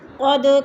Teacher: دال ساکن ہے، حروف قلقلہ میں سے ہے تو اس کو ہلا کر پڑھیں گے